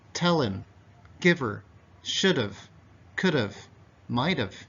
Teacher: if we're talking naturally and faster, very often these H sounds are deleted.